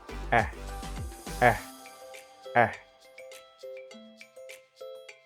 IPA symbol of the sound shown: æ